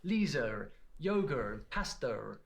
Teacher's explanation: you get what linguists call the intrusive R intrusive meaning it shouldn't be there